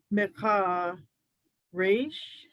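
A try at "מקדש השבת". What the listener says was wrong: That's a daled.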